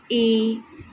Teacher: हम अपने मुख को हाफ क्लोज रखते हैं मतलब आधा बंद रखते हैं तब हम ए ओ का उच्चारण करते हैं।